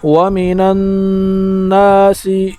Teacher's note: نون کے اوپر شد آیا ہے تو اس وجہ سے اس پر غنہ ہوگا